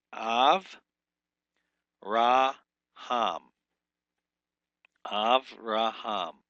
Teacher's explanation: So it'll be a long A instead of a short O.